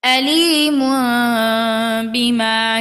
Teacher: ওয়ালাহুম আযাবুন আলীমুন এখানে আমরা মিলিয়ে পড়ব কারণ লাম চিহ্ন আছে মিলিয়ে পড়লে তানভিনের বামে বা অর্থাৎ ইকলাব আমরা মিম দ্বারা পরিবর্তন করে গুনাহ সহ পড়ব